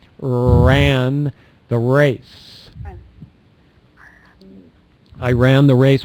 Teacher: with the tongue if this is the back of the tongue the back area is touching the molars the front is curled but it's not touching the top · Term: R sound